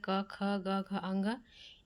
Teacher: क ख ग घ अंग ये जो पांच शब्द होते हैं वो कंड से निकलते हैं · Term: कंठ